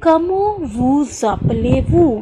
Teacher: S and A when joins make Z sound